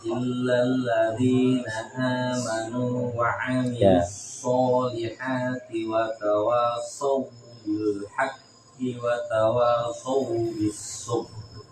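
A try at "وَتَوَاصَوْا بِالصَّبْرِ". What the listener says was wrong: Jangan sabr, langsung aja. Sabru. Langsung wa tawassaw bis sabr. Ya, jangan ditekan. Jangan ditahan loh. Sabr. Langsung. Sabru.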